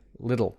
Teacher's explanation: We call it a flap type, sort of light contact with the alveolar gum ridge.